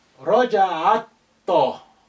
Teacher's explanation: Ta is sun letter, and that's why the lam has become quiet.